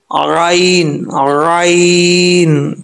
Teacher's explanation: गले की जो बीच वाली जगह है ना, वहां से ये आइन पढ़ा जाता है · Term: वस्ते हल्क